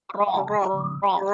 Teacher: di ujung lidah ketemu di langit-langit atas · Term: huruf ro